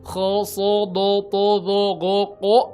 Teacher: Pangkal lidahnya naik. Kho so do to do go ko ya, belakangnya o semua walaupun dikasih fathah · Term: isti'la